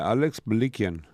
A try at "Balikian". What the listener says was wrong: Why is it Malikian? It sounded like you said an M.